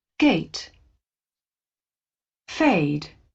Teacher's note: there's also a glide from e to I in gate and fade. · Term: diphthong